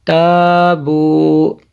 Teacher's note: اس کو موٹا نہیں کرنا ہے، باریک کرنا ہے